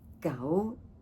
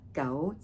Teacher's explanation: So you want to say like go not go right. So you can hear the difference in the tones of the rising and then that flat tone